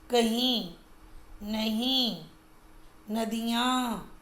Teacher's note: जिन स्वरों का उच्चारण मुख और नासिका दोनों से किया जाता है वे अनुनासिक कहलाते हैं,